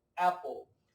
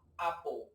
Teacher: É entre o A e o E. O americano, naturalmente, puxa mais para o E. Apple. O britânico puxa mais para o A.